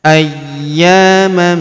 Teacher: Kemudian tanwin an, huruf man bertemu huruf ma berharakat tasydid yang ini. Maka tanwin annya melebur masuk ke huruf ma.